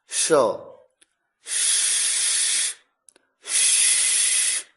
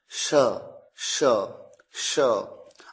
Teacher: जब आप अपनी जीभ को ऊपर वाले तालू की तरफ थोड़ा सा घुमा दें और उसके बाद स की ध्वनि बोलें तो अपने आप शलगम वाले श की ध्वनि आएगी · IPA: /ʃ/